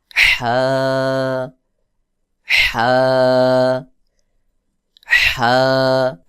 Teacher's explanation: হা বলতে হবে হলকের মধ্যখান থেকে চাপ দিয়ে, হলক অর্থাৎ গলার মধ্যখান থেকে চাপ দিয়ে উচ্চারণ করতে হবে।